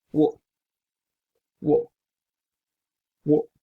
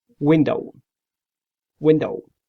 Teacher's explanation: The manner of articulation is approximate. You have to use your upper lip and lower lip.